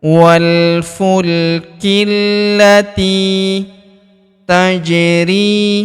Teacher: Huruf ja berharakat sukun kita pantulkan atau kita qalqalahkan. Tajri huruf ri kita panjangkan dua harakat karena terdapat ya sukun di depannya.